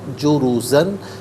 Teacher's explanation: جروزہ میں را پر پیش را کو پر کر کے پڑھیں گے، صعیدن جروزن، یہاں وقف کریں گے تو جروزہ پڑھیں گے۔